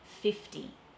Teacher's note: So that T in the middle of 50 has to be a hard T because the F comes before the T